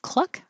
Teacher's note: of the first part of cluck like a chicken um but the back of your tongue is making a k and the front of your tongue is making an l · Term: KL combination